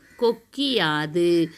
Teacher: குற்றியல் உகரச் சொற்களைத் தொடர்ந்து யகரத்தை முதல் எழுத்தாகக் கொண்ட சொற்கள் வரும்பொழுது குற்றியல் உகரத்தில் உள்ள உகரம் இகரமாக மாறும் அந்த இகரம் தனக்குரிய ஒரு மாத்திரை அளவிலிருந்து அரை மாத்திரை அளவாக ஒலிக்கும் எடுத்துக்காட்டு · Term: குற்றியல் இகரம்